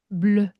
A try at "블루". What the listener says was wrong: 조금 더 입술 모아서 블루